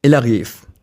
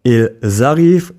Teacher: Il arrive, he is arriving, has no z sound, but ils arrivent, they're arriving, has a z sound between the words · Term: liaison